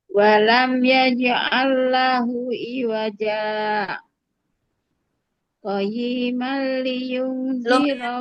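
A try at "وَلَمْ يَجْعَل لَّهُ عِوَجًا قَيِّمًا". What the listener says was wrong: Kepanjangan berhenti ininya. Berhentinya kepanjangan. Nanti nafasnya lama. terlalu lama. Qayyiman. Qayyimal. Ya, tasdid dianya kurang body. Qayyimal liyun.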